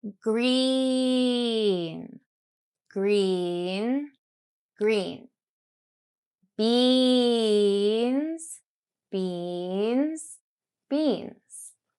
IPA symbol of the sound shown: i: